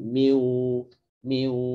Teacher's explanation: Jadi harusnya masih ada gunahnya nun, namanya idgham naqis, idgham yang menyisakan sifat nun, mai itu masuk hidung. Juga miu itu sengau masuk hidung.